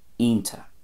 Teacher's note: It would lose the ch at the end and kind of turns into a TA